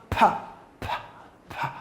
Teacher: You find no vibration within the vocal cord. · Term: voiceless consonants